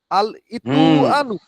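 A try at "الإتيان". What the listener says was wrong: এই বেটা ইতো না ইত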